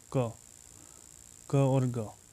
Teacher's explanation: अल्प प्राण जिनमें वायु कम निकलती है।